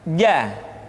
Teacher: dikeluarkan dengan menyentuhkan tengah-tengah lidah dengan langit-langit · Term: huruf j